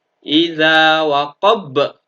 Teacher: Maka karena matinya huruf qalqalah ini adalah karena waqaf atau disebabkan waqaf, maka masuk bacaan qalqalah kubro, harus dipantulkan lebih tebal.